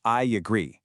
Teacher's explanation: And I agree gets a tiny Y sound turning into I agree. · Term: linking